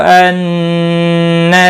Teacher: नून मुशद्दद पर गुन्ना होगा।